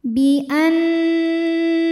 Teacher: Dzalika bi annahum, nunnya dihukumi dengan gunnah musyaddadah karena nun bertasydid, maka cara bacanya adalah didengungkan, bunyi n tahan sampai ada suara masuk hidung kurang lebih dua harokat